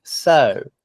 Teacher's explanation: it's not compressed because there's no reason to compress it it's not followed by an unvoiced consonant it's not followed by any consonant